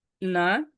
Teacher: এই টোনটা উপরে যাইতেছে, এটাকে রাইজিং বলে